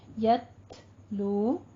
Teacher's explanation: तापे साकिन है तो हम थोड़ा सा हमस करेंगे, यतलू हल्की सी सांस की आवाज भी आएगी साथ में